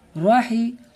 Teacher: را کو پر کر کے پڑھیں گے کیونکہ را کے اوپر زبر ہے